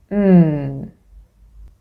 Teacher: exactly right there at the lips with both lips closed so this place of articulation is bilabial by meaning to and laal meaning lips so both lips close